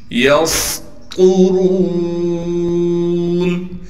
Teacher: یسطرون، یا کو سین سے ملائیں گے، سین میں سیٹی ادا کر کے سین کو باریک کر کے پڑھیں گے، طا کو موٹا کر کے پڑھنا ہے